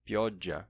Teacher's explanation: o italiano tem pioggia, com o L vocalizado em I